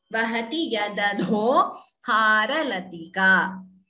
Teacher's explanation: Here the first da is alpa prana, second dha is Mahaprana.